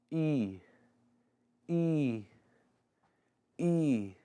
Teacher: double I indicates a long vowel that sounds very similar to the vowel of the English words lead and read